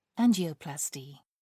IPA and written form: ˈændʒɪəˌplæstɪ (angioplasty)